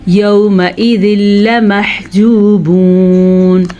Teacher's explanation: یومئذ لمحجوبون. یہ نون تنوین کے بعد جو ہے لام آ گیا ہے، پھر یہاں پہ ادغام بلا غنہ ہوگا. یہاں پہ کیا چیز ہٹ جائے گی، نون تنوین کی آواز ختم ہو جائے گی.